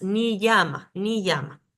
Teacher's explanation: tengo que sonar como como si hubiera dos y latinas seguidas